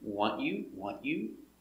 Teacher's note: you can say want you with a silent T, want you, or together the T makes a ch sound.